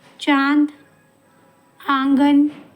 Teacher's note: इसका उच्चारण जो है वो नाक और गले दोनों से होता है। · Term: अनुनासिक